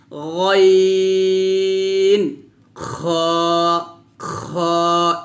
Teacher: গাইন খ টা আমরা মোটা করে উচ্চারণ করব